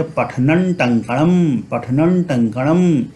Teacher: पठनम टंकणम, यहाँ अनुस्वार के बाद ट आ रहा है, तो इसे हम चूंकि यह जो ट है यह ट वर्ग का सदस्य है जिसका अंतिम वर्ण अणा है, तो इस अनुस्वार का उच्चारण न के अनुसार होगा और हम पढ़ेंगे पठनन टंकणम, पठनन टंकणम।